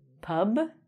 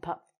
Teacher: the B sounds are always going to be vibrated, and the P sounds are not going to have a vibration.